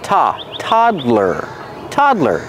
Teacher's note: The first syllable is the open ah sound, like hot and stop.